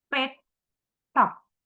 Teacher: Pet, top, bilabial, plosive. Place of articulation, bilabial, manner, plosive.